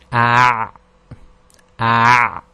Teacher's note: the sound that comes out is a bit further back than the ha, the throaty ha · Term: ayn